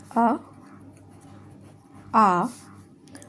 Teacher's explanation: पहले दो स्वर हैं अ और आ। तो वह आएंगे हमारे कंठ में